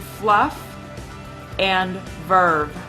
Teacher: the Lao Dental fricatives F and V are produced by Biting Down on the lower lip